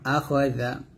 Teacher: এই জাল উচ্চারণটা জিহ্বার আগা উপর দাঁতের আগার সঙ্গে লাগাবেন